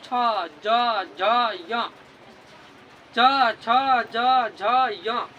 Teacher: आपका जो जीव है वो कहाँ सट रहा है? तो आपके तालु से, यानी कि ऊपर छत से सट रहा है।